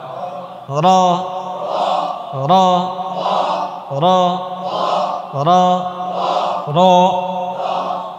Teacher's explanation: র এটা বাড়ি দিতে হবে যেন আওয়াজটা হয়